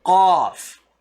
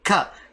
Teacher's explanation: make the sound from deep inside your throat, a little bit deeper